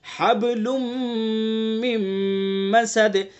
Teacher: حب با کے اندر قلقلہ کریں گے